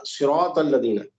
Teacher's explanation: میں آپ کو اتنا بتاتا ہوں، جیسے آپ نے پڑھا صراط الذین، دیکھیے اردو میں سین اور صاد دونوں کو ہم ایک جیسے ہی پڑھتے ہیں، گدھا اور گھوڑا دونوں برابر ہو جاتا ہے، جبکہ ایگزیکٹلی سین جو ہے باریک پڑھا جاتا ہے اور صاد کو جو ہے موٹا پڑھتے ہیں. اہدینا صاد کو موٹا کر کے پڑھتے ہیں.